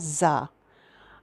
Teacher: ज़ुबान की नोक जब नीचे के दांतों में लगती है तो सीटी की आवाज़ आती है